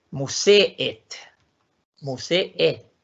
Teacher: no es una vocal larga sino que son dos vocales